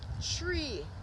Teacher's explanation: in Jamaican pwa we usually don't pronounce the th sound